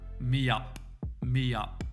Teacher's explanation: a yo sound which can happen when two vowel sounds meet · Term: y sound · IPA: miːjʌp